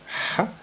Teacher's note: le H qui n'est pas aspiré, il est tout doux. Contrairement au premier H qu'on avait vu juste ici. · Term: H qui est tout doux